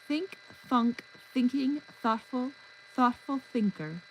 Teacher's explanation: the tip of your tongue dances between teeth, a whisper of air, a soft thought springing into sound.